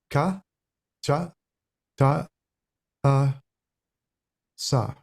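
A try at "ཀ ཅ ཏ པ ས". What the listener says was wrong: You can add a little bit more air, I think, on the second, like ka, cha, ta, pa, sa. It's like ka.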